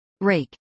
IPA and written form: ˈɹɛɪk (rake)